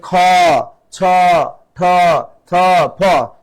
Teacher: শ্বাস বেশি লাগতেছে তার মানে এগুলো কি মহাপ্রাণ ধ্বনি